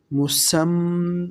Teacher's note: سین کو سیٹی کی طرح تیز آواز کے ساتھ پڑھتے ہیں